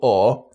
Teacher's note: The BOAT vowel is a monophthong ɔː which can sound similar to RP bought.